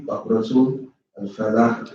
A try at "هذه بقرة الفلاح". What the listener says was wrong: No, you pronounce L again. You already did it when you said tul. Remember, this is the rule of Hamza to the Wasl. Hamza to the Wasl, again, is in the middle. And the Hamza is written as something else. So you just work to the line.